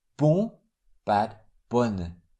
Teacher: Bon, with a nasal on. Bonne, without a nasal sound.